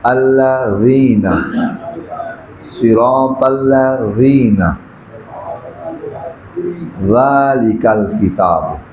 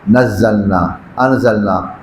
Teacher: ذال کو ادا کریں گے نمبر 1 نرمی کے ساتھ، نمبر 2 تھوڑی سی زبان سامنے والے 2 دانتوں سے باہر نکالیں گے ایسے ذا۔